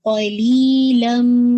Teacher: لی آپ نے 2 کاؤنٹ پڑھنا ہے، لم آپ کا پورا تنوین کی ساؤنڈ چینج ہو گئی میم کے اندر